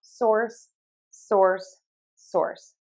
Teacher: it's like a Z sound, but your voice box is off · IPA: /sɔrs/